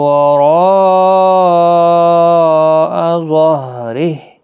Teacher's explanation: را الف مدہ ہے، اور بعد میں حمزہ آیا ہے اسی کلمے کے اندر، تو یہاں پر مد متصل ہے، 4 الف کی مقدار کے برابر کھینچ کر پڑھیں گے